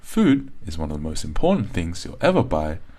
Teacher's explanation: notice how it's going up and down up and down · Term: up and down rhythm